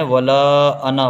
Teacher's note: یہاں پر نون کے ساتھ الف ہے لیکن الف نہیں پڑھا جائے گا، تو نون کو نہیں کھینچنا ہے